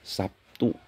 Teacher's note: B berubah menjadi P bunyinya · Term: asimilasi